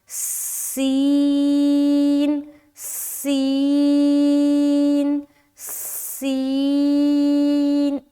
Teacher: سین کی آواز سیٹی کی مانند نکلتی ہے